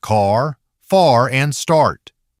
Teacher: The jaw drops, the mouth starts wide open. But don't stop there. Keep the sides of the tongue anchored and let the sound curl into /r/ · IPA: /ɑr/